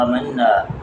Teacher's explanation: حمزہ کو ایک الف کے برابر لمبا، مَنَّا من یہاں پر غنہ